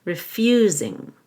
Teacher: I'll stress the you in refusing because it's a verb · The S will sound like a Z, refusing.